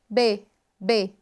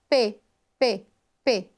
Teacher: o lábio superior em contato com o lábio inferior. Melhor exemplo disso é a letra B, B, B, ou também P, P, P. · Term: Bilabial